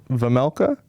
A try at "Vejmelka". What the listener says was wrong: No, it's Vejmelka. J is pronounced in there.